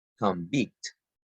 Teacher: Because convict is a noun that the stress is the first syllable.